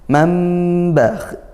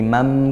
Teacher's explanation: Mambakh, ini iqlab ya, nun sukun bertemu ba, iqlab berbalik dari bunyi nun ke huruf ke bunyinya mim ya. Yang asalnya man jadi mam karena bertemu ba